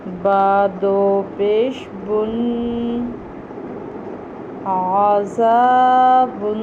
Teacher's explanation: با دو پیش بن، تنوین ادا کریں گے تو یہ لفظ بن جائے گا عذابن